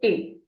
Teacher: E with an accent, sound is A. The sound is a little longer